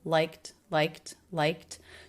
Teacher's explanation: the e d ending here is the T sound because the sound before was unvoiced